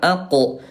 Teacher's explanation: Bedakan antara qaf dengan kaf ya. Bunda huruf qaf kalau sukun dia syiddah kuat dan qalqalah